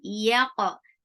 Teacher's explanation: keep ya very light, and qaf give qalqala on qaf. Yaqa, qa is heavy and short.